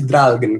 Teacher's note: Você pode perceber que o volume aumenta, depois ele abaixa bruscamente e sobe um pouco. Isso dá um som bem rígido, assim, para a fala.